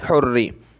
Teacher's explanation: रा के नीचे ज़ेर आ जाए तो उसको बारीक पढ़ते हैं पतला करके, इसलिए इसको हमने पतला करके पढ़ना है।